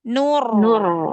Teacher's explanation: rnya tuh sukunnya sudah langsung tebalkan ya sudah langsung angkat pangkal lidahnya